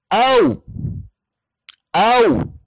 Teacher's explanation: वाव के ऊपर जज़्म हो तो इसकी आवाज होगी औ औ, यानी होंठ पूरी तरह गोल होंगे